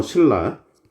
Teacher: 리을 앞에 있는 니은이 리을로 교체됐습니다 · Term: 유음화